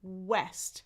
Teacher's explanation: But west, it's not a friction sound. It's a glide and it's way in the back. My tongue is in the back and my lips are rounded.